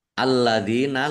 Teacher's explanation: lamnya dibaca dobel ya ada tasdidnya